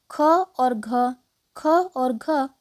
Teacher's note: ख और घ महाप्राण वर्ण है वर्ग का दूसरा और चौथा अक्षर